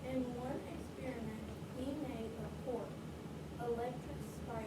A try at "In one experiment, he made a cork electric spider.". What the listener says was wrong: Did you stopped after cork? Do you hear? Listen to what this is what it sounded like. You may not have realized this. In one experiment, he made a cork. Electric spider. Did you hear the pause? Is there a comma or an end punctuation mark? So do you pause? So you just keep going.